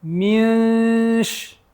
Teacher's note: Just to go over it real quick. The ikhfa, we're hiding the noon, but we're keeping our tongue, we're preparing ourselves to pronounce sheen